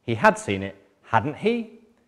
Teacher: falling intonation pattern with the question tag meaning, I'm pretty sure but I want to check.